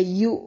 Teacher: یو کیونکہ حمزہ ہمیشہ جھٹکے سے پڑھا جاتا ہے